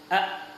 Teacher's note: Asyiddah kalau kita praktekkan, ketika huruf hamzah kita sukunkan menjadi a, suara yang mengalir itu tertahan. A, kemudian tidak bisa mengalir.